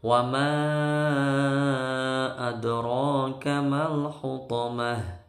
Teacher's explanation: dalnya mantul ya, huruf qalqalah ini karena sukunnya asli maka dia qalqalahnya kecil, qalqalah sughra